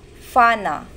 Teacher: example duma means house versus ruma means field the F sound the F sound in gadang is true Voiceless bilabial fricative unlike the p sound predominant in many other Philippine languages